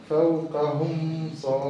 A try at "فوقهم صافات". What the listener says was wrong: أظهرها. أظهرها يا أخي. فوقهم صافات ويقبض. لا تحبس فيها. حكمها الإظهار. فوقهم صافات ويقبض.